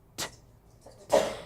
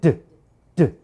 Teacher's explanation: Is T a voice sound or a voiceless sound? It's voiceless because you don't feel the vibration here. Let's try D.